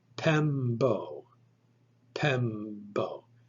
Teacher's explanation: You should not pronounce the P like a normal P. It's not pempo, it's pembo.